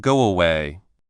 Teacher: Saying go and then away can feel a bit sudden. So, speakers often add a very small W sound in between, making it sound like guay.